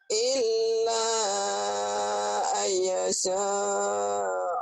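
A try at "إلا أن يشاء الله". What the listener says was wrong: nyambarnya kurang. Illa ayyasha kurang nyambar. Illa ayyasha Allah. Illa ayyasha Allah. Illa. Ilnya jangan ditahan. Illa. Lanya yang ditahan. Ilnya jangan ditahan. Illa. Ilnya double doang. Lamnya double doang.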